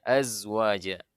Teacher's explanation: Zai bukan hamas, dia jahar, jadi jadi tidak mengalir dia.